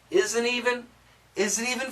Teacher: n kills the T